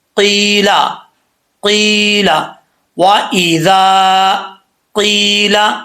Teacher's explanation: یہاں یا ساکن سے پہلے قاف کے نیچے زیر ہے تو یہاں یا مدہ ہے، ایک الف کی مقدار اس کو لمبا کریں گے